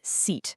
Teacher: Your tongue is pushed way up high in your mouth.